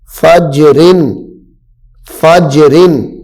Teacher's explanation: یہاں پہ جیم حروف قلقلہ ہے ساکن ہے تو اس کو خوب ظاہر کر کے پڑھنا ہے